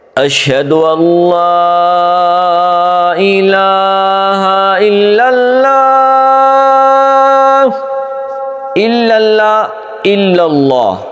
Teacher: الا اللہ موٹا ہونا چاہیے اور اشھد ان لا الہ اشھد ان باریک ہونا چاہیے ہم الٹ پڑھتے ہیں اشھد ان اللہ کو ہم اشھد اللہ